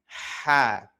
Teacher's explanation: pelafalannya jauh lebih lembut dan tempat keluar hurufnya pada bagian tenggorokan tengah.